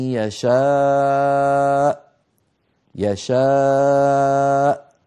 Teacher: إذا تلاقى الوتران الصوتيان في الحنجرة انقفل الصوت وانقطع الصوت وخرجت الهمزة، ليست بحاجة إلى مزيد يعني مبالغة. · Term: الهمزة الساكنة